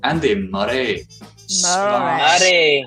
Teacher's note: you say every single R sound, but you tap it